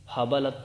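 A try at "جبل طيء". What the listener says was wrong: نہیں، جیم بجبل طے. نہیں غلط لکھے.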